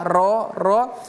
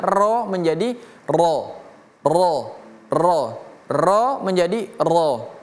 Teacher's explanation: Jadi cara menebalkan huruf atau bacaan itu dengan kita menaikkan lidah kita yang di tengah dan yang di pangkal. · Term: istiala